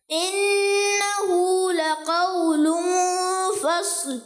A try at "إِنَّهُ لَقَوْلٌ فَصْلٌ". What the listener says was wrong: ماشاء اللہ، فصل، صوت کو اور کیا کریں گے؟ موٹا رکھیں گے۔ دوبارہ ایک مرتبہ آیت کو دہرائیں۔ اور لقول میں کیا کریں گے؟ اخفا کا غنہ بھی کریں، اخفا کا غنہ دہرائیں دوبارہ۔